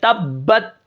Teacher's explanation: یہ جو با ہے یہ بہت سختی اور جماؤ کے ساتھ ادا ہو رہی ہے